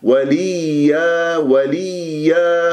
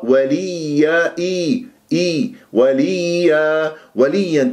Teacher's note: بالله وليا، شوفوا هكذا نقرأها، ما قرأ بالله وليا، لا، وليا، يا مشدد النبر، أحد مواضع النبر في القرآن الياء والواو المشددتين